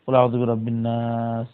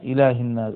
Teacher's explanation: লামটা নুনের মধ্যে ইদগাম হয়ে গেছে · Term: শামসিয়া